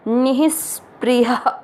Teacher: ह में अ की मात्रा तो विसर्ग को पढ़ेंगे ह